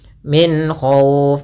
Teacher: karena datang setelah huruf nun ada huruf k yang di mana k termasuk huruf yang makhrajnya keluar daripada tenggorokan kita maka dia harus jelas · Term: izhar halqi